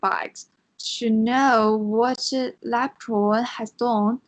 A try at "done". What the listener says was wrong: so uh, the word is done. D-O-N-E. It's pronounced done. I know it's written with a letter O, but that letter O is pronounced like a letter U, like the letter U. So it would be pronounced done. Not done. Done.